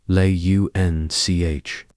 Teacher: The vowel sound in launch is longer and should be articulated clearly, setting it apart from similar words like lunch. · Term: long or sound